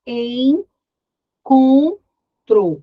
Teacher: O som ele é totalmente dispensado pelo nariz e não pela boca. E você não percebe que tem um N.